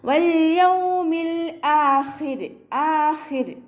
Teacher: റോക്ക് സുക്കൂനും അതിൻ്റെ മുന്നേയുള്ള അക്ഷരത്തിന് കെസ്റയും വന്നു കഴിഞ്ഞാൽ റോയിനെ നമ്മൾ ലൈറ്റാക്കിയിട്ടാണ് വഖഫ് ചെയ്യുക